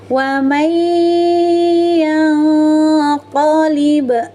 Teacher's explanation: nun sukunnya disamarkan masuk ke mahrajnya huruf qaf sambil disertai dengung 2 harokat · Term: ikhfa hakiki